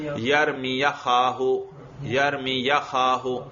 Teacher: یا پر زبر پڑھو اور حمزہ کو گرا دو